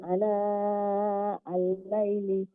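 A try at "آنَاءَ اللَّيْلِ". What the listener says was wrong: আনা আল-লাইলি, লম্বা হবে, এখানে খেয়াল রাখতে হবে লম্বা হবে, নাও লম্বা হবে। আনা আল-লাইলি,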